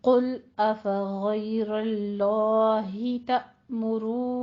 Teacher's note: پھر آگے نون مشدد کا غنہ بھی ادا کرنا ہے 2 حرکتوں برابر